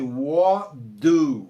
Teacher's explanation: o T vai morrer por causa do D. E vai ficar assim, what do, ok?